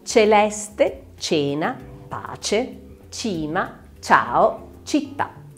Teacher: Avremo invece la C dolce o palatale quando è seguita da una E o da una I.